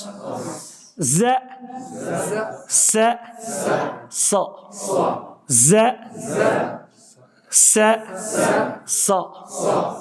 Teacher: زبان کی نوک کو ثنایا سفلا کی جڑ سے تھوڑا اوپر ملا کر ز سین صاد ادا ہوتا ہے